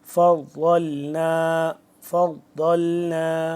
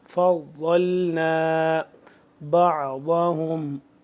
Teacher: زبان کی بائیں کروٹ کو اوپر والی داڑھ کے ساتھ جب ٹچ کریں گے تو ضاد صحیح طرح سے ادا ہوگا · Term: ضاد کا مخرج